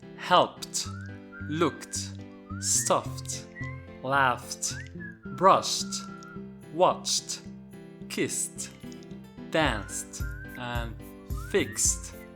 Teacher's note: any of these voiceless sounds, that is p, k, f, sh, and s, we pronounce the ed as t. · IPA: /t/